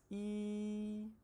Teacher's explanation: it's a front high vowel what this means is your tongue is standing high at the front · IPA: /iy/